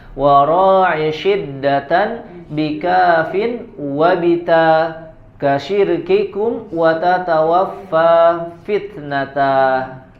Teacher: jagalah, jelaskanlah pengucapan sifat syiddah, Di sini Al-Imam Ibnu Al-Jazari untuk memperingatkan tentang sifat syiddah yang harus disempurnakan pada huruf kaf dan ta